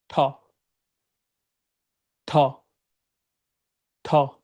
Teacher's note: আপনার যেই জিহবা আছে, এই জিহবা উপরে মাড়িতে গিয়ে টাচ খাবে, দেন আপনি সাউন্ডটাকে প্রডিউস করবেন ঠ ঠ ঠ।